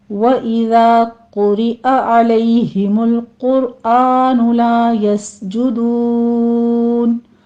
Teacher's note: آگے علیہ عین وسط حلق سے نکلے گا